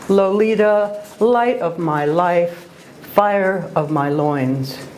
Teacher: the repetition of the long o and the long i vowel sounds creates marvelous and memorable music